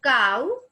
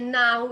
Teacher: last diphthong is ow. So it's the combination of a plus u, and it becomes ow. And in for example, in the words like cow, C-O-W, cow, ka, ow, ka adik ow, it becomes cow.